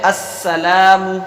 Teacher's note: سین کو باریک رکھنا ہے، لام کو ایک الف کے برابر کھینچنا ہے